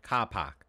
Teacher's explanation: The R sound in the Boston accent is heightened and assimilated into an ah thing. So the R becomes ah, and their pitch rises when they say it.